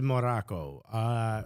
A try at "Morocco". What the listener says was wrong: Also, you just said Morocco like in Spanish. Which is not.